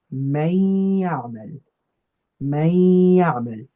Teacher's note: we merge that nun into the ya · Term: idgham